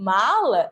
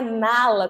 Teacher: são duas consoantes nasais que tem aqui a influência da cavidade nasal e esse som sai nasalizado